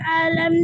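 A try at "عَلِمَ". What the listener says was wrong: আলিমা না, আলিমা, আইনটা গলাটা চেপে পড়তে হবে, আলিমা, আলিমা।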